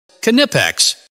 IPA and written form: ˈnɪpɛks (Knipex)